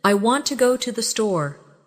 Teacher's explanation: The stress is on want and store. The words to and the are much softer. This creates the rhythm of English.